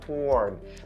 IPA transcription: hɔːrn